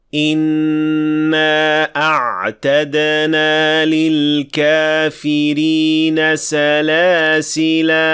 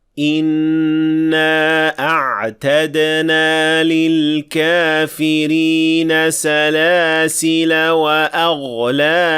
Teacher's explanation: when we stop at it, we will pronounce a full alif with 2 counts.